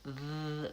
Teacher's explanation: Whereas th, I have to have that interdental tongue position. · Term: voice TH sound